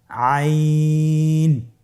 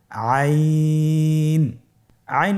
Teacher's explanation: আইন হরফটি উচ্চারণের সময় অবশ্যই তিন আলিফ টেনে পড়তে হবে। এখন আইন হরফটি বারিক হরফ। পাতলা করে পড়তে হবে